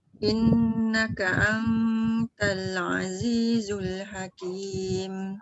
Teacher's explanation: Nun bertemu ta tak boleh sebab dia ikhfa.